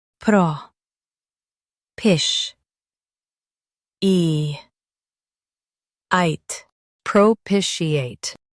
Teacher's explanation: emphasize pish and soften eate